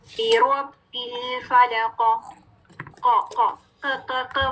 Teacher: کلکلا کیا ہوتا ہے کہ آواز باؤنس بیک کرتی ہے. جب ہم قاف ساکن کریں گے تو آواز پلٹے گی, آواز باؤنس بیک کرے گی. بیروب بالفلق, ق, ق, ق, ق والی ساؤنڈ نہیں ہے, ق, ق نہیں پڑھنا.